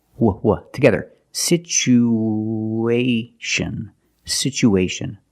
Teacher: we have two vowels together the U and the a we need to link these vowels with the sound ww like the W sound